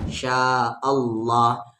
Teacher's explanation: اللہ کے لام سے پہلے زبر ہے یعنی اس اللہ کو لام کو ہیوی پڑھیں گے